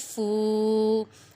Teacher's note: فا پہ واو مدہ ہو رہا ہے کیونکہ واو ساکن سے پہلے پیش ہے